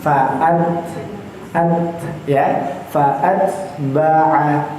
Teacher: Ta yang bersukun, huruf taknya itu boleh kami katakan sesuatu huruf yang termasuk huruf yang hamas, huruf yang ada desisnya sedikit. · Kalau ke itu pada huruf kaf, kalau ta itu teh, fa'at ya, fa'at. Jadi ada th kayak fa'at, ada s-nya sedikit di ujungnya.